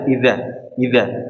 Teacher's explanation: pakai huruf dal ditempelkan ke ujung gigi atas